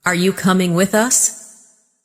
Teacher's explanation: Rising tone for question.